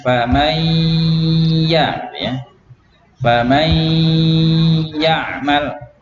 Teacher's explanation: Jadi yang dipanjangkan adalah dengungnya ya, bukan ya-nya.